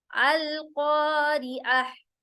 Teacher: सबसे पहले ताउवुज़, अऊज़ु बिल्लाहि मिनश शैतानिर रजीम, तस्मिया, बिस्मिल्लाहिर रहमानिर रहीम, अल क़ारिअह, अल क़ारिअह, कॉफ मोटा होगा, कॉ मोटा होगा, जिसमें स्क्रैचिंग साउंड नहीं होगी, कॉ मोटा करेंगे, अलिफ मद्दा हो रहा है, कॉफ के बाद जो अलिफ आ रहा है इसमें अलिफ मद्दा होगा, कॉ लंबा होगा